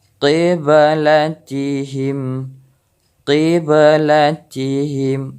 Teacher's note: Bukan kiblatihim, tapi qiblatihim. Jadi suara ba, pantulan ba itu terdengar.